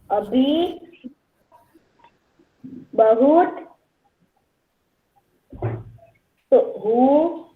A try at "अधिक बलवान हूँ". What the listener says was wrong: बेटा अधिक बलवान हूँ। शब्दों को देखो बच्चा, अधिक बलवान हूँ, बहुत नहीं लिखा हुआ है ये। अधिक बलवान हूँ,